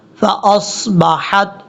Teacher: فاصبحت حمزہ کو جب صاد سے ملائیں گے تو صاد حروف مستعلیہ میں سے پر پڑھا جائے گا